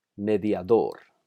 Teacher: Por ejemplo, mediador. Note el acento en la última sílaba. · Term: acento prosódico